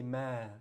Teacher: If you stop, you're going to say ma. You're not going to pronounce the fathatain. You're not going to say man.